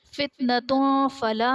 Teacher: فتنتوں فلا میں تا پر دو پیش کی تنوین، تنوین کے بعد حروف اخفا میں سے فا آ رہا ہے تو یہاں پر اخفا کا قاعدہ ہوگا، یعنی تنوین میں ہم غنہ کر کے پڑھیں گے۔